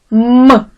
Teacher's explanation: коли ми вимовляємо губи міцно стиснуті що є перешкодою на шляху повітря що видихається а потім губи різко розкриваються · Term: звук м